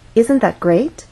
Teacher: we're using rising intonation because this question requires a yes-or-no answer by asking isn't that great we expect our listener to agree